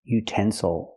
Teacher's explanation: Again the third syllable is not stressed. So we cannot say ill. We have to say oh utensil.